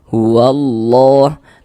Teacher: Karena huruf lam yang ini enggak ada tanda bacanya enggak dibaca orang enggak ada tanda bacanya langsung diidgamkan, langsung dimasukkan ke huruf setelahnya gitu cara bacanya. Huallah. Lafaz Allah dibaca panjang. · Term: idgham syamsiyah